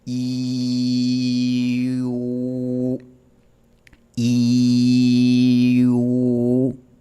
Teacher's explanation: ¿Notas como tu lengua se mueve desde adelante hacia atrás?